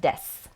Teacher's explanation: it is spelled de su but you drop the oo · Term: vowels are not voiced